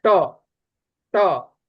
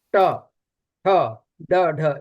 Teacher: ऋतु रसाणाम मूर्धा, री का ट वर्ग का उच्चारण मूर्धा से होता है, ट, ट, ये मूर्धा से थोड़ा ऊंचाई पर जीभ को ले जाना पड़ता है